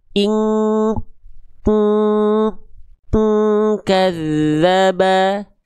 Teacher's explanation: Harusnya kalau ketemu sama huruf kaf ini dengungannya kuat, mendekati eng.